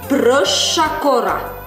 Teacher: как звучит у нас буква «щ» в коми, как долгая «ш».